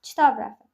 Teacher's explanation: Burda özündən sonra samitlə başlayan söz gəlib deyə b pimi tələffüz ediləcəkdir. Yəni sözün sonundakı cingiltli b samiti p qarşılığı kar samiti olan P samiti kimi tələffüz ediləcək